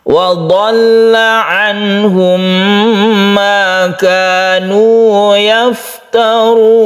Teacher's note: mem bertemu dengan mem kita sebut dengan idgham mimi, kita panjangkan, kita dengungkan.